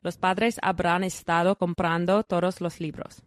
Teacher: That sentence has about 16 syllables, all more or less equal in weight. Yeah, so we don't rush through los, for example, which we rush through in We give it its English.